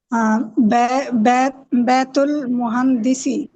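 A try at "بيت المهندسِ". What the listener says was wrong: بیت المہندسی. Last letter کی حرکت کو کلیئر پڑھا کریں. بیت المہندسی.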